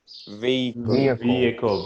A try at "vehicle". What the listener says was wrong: Vehicle. Vehicle. That H sound, you don't really pronounce vehicle. It's more vehicle. Maybe some people say vehicle. Vehicle, mas em geral é vehicle.